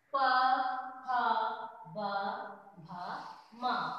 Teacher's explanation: पावर को जब हम पढ़ते हैं तो हमारा लिप्स जो ओंठ है, दोनों ओंठ आपस में स्पर्श करते हैं, तब जाके इसका उच्चारण होता है